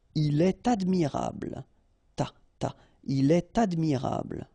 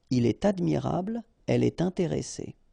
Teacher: in all these cases you should make the liaison, and in that case it's with T.